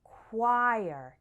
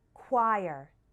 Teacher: choir referring to a singing group this one is tricky because the CH sounds like a K and the O sounds more like a u